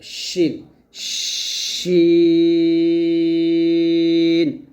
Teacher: শিনটা হবে জিহ্বার মধ্যখান, তার বরাবর উপর তালুর সঙ্গে লাগবে, উপরে তালুতে লাগবে, শিন, শিন, এরকম।